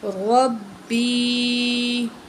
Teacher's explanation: را کو موٹا کر کے پڑھیں گے کیونکہ اس کے اوپر زبر ہے